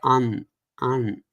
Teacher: And anuswara is essentially pronounced as the definition of that is a post-vocalic nasalization, which means you say the consonant, you say the vowel, and then you have a nasal, release. So it will be just sound like an.